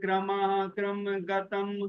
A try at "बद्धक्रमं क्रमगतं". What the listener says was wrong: ना देखिए जो मिश्रित वर्ण है ना, उनको आप अगर अलग अलग से बोलोगे तो फिर वो बोलने में बड़ी दिक्कत रहेगी। जैसे मुक्ता फल प्रकर, ऐसे नहीं, मुक्ता फल प्रकर, उसका जो प है वो ल के साथ जाए। ऐसे बद्ध क्रम क्रमगतम, ऐसे वो गलत हो जाए।